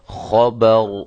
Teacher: را کو میں نے موٹا کیا ہے، را کے اوپر جب ہم نے وقف کیا تو را ساکنہ ہو گئی